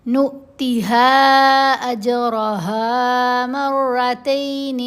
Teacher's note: ہا کے اوپر یہ جو مد ہے یہ مد منفصل ہے، اس کو 3 حرکات کی مقدار لمبا کیا جائے گا